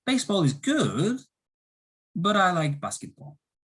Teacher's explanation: the rise, fall, rise intonation for disagreement